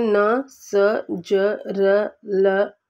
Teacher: ये हमारे ये दांतों के पीछे का कठोर हिस्सा से निकलते हैं। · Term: वस्य